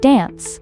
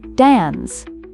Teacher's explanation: an American might say dance with a short a sound like dance, while a British person may pronounce it as dance.